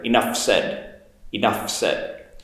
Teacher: i'll link that f and s together enough said enough said notice also my